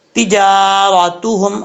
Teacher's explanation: ये ता जो है दो नुक्तों वाला, ये बारीक पढ़ा जाता है, इसको मोटा पढ़ने की ज़रूरत नहीं है। इसका मखरज है ज़ुबान की नोक ऊपर वाले दांतों की जड़ों से लगे तो ता पढ़ा जाता है, तिजारतुहुम, रा के ऊपर ज़बर रापुर पढ़ा जाएगा।